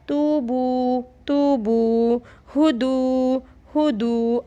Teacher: ये वाव साकिन है, वाव के ऊपर साकिन है, तो वाव साकिन से पहले अगर पेश आ जाए तो वो वाव मद्दा कहलाता है। तू बू वो 1 अलिफ़ के बराबर खींचना होता है।